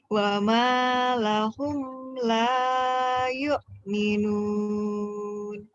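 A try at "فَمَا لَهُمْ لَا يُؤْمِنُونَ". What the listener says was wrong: Wa ma fama ya, bukan wama ya. Tadi kamu fama apa wama ya? Fama ya?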